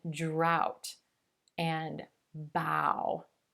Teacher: the o-u-g-h can sound like the ow as in brown now there's a lot of movement for this sound we drop the chin and round the lips